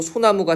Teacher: 솔 더하기 나무라고 했을 때 리을 탈락해서 소나무가 되는 거